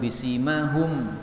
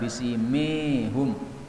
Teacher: Pada ayat-ayat yang kita baca ini ada beberapa kata yang bisa dibaca dengan dua bacaan. Pada ayat 41 bisimahum boleh dibaca dengan imalah bisimihum.